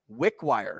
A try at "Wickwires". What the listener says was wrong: Don't say Wickwire, Wickwire. It's Wickwires. Two words make one word.